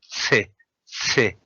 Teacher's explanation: Che, you produce this sound from the tongue tip.